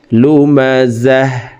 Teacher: গোলতা ওয়াকফের ক্ষেত্রে হার উচ্চারণ করব এবং হাকে সাকিন করে ফেলব, তখন শব্দটি এভাবে পড়তে হবে, লুমাজাহ।